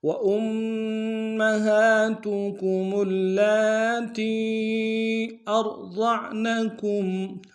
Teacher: وَأُمَّهَاتُكُمُ اللَّاتِي أَرْضَعْنَكُمْ، حمزہ کو را کے ساتھ ملانا، را کو موٹا ادا کریں گے، ضاد کو موٹا ادا کرتے ہوئے عین کے ساتھ ملانا ہے، عین کو گہرائی سے ادا کریں گے، نون کو نم سے ادا کریں گے، کاف کو میم ساکن کے ساتھ ملانا ہے، غنہ کریں گے۔